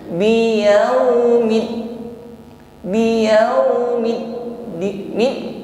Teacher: Ini hibasu jarayanus shaut, natijah ghalqil makhraj, tertutupnya aliran suara, tertahannya aliran suara karena sempurnanya makhraj saat tertutup. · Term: syiddah